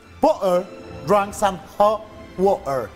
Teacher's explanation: esto de frenar la T con la glotis